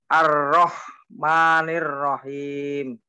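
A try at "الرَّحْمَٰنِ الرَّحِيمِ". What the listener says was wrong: Ma-nya panjang dikit. Ar-Rahmani. Ar-Rahmanir-Rahim.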